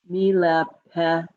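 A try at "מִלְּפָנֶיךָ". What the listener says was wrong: fa. It's a fe. not mile. Meal, fa, ne, cha.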